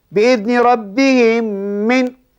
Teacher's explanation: Cara bacaannya dimasukkan diidghamkan mim pertama ke dalam mim yang kedua. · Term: idgham mutamassilain